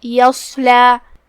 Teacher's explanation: صاد حروف التفخیم میں سے ہے، تو ہم اسے بھاری آواز میں منہ پھولا کے پڑھیں گے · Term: حرف الصاد